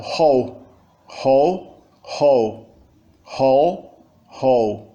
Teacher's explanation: a gente pronuncia a rótica forte com uma articulação glotal e não com uma articulação velar